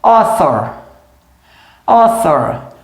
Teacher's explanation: esse aqui é um TH voiceless